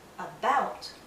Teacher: in the word about the stress is on the second syllable but in the first syllable we have a a so in